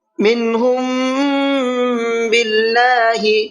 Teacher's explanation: میم ساکن کے بعد میں با آتا ہے تو وہاں غنہ اخفا دونوں کر کے پڑھتے ہیں کیونکہ یہ اخفاء شفوی کا قاعدہ کہلاتا ہے۔